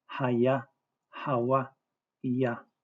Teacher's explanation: Our creator's name has a vowels, not e vowels, and they are long a vowels